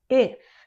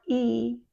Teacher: Very much like long E, but the corners of the mouth are not pulled back as much. If, not E, it's if. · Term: short I